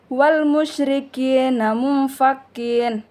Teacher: Ada nun mati bertemu dengan huruf ikfa yang di mana dia hukumnya ikfa maka dia dibaca samar-samar dengan dengung seperti huruf ng. Contohnya wal musyrikina munfaqin itu hukumnya ikfa.